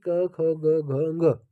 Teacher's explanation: क वर्ग का उच्चारण स्थान होता है कंठ